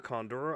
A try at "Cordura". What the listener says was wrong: Cordura. Cordura. There's no N in there.